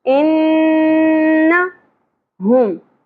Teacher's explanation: نون مشدد کے اوپر غنہ ہوگا